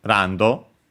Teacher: Uh and yeah, again we have just like for to uh we have the O as the additional vowel because to avoid changing the sound of the consonant. As for its accent should be on the first syllable just like English